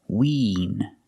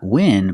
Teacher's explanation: It has the long E sound like green beans, so it's more closed. Not win, but wean.